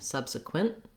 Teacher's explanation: even though we have a t at the end of this word i'm not necessarily saying subsequent with the released t we use what's called a stop t here in a lot